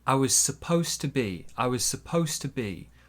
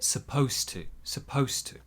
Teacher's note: the D in supposed to disappears.